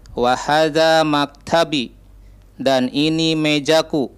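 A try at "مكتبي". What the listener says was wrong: Nah, maktabi agak panjang B-nya.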